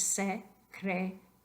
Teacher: Ok, es importante recordar que I, A al fin de la palabra forman un diptongo. Entonces, solamente son una sílaba.